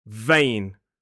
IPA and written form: veɪn (vein)